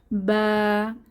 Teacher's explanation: দুই ঠোঁটের ভেজা জায়গা থেকে বা উচ্চারিত হয়